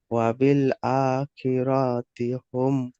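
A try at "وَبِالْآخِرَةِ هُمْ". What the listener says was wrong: অবিল আখিরতি হুম। টান হয়ে যাচ্ছে। অবিল আখিরতি হুম।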